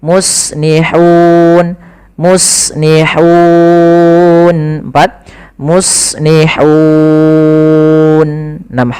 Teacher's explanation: sebelum matikan nunnya kita boleh memanjangkan 2 harokat, boleh 4 harokat, boleh pula 6 harokat. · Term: mad arid sukun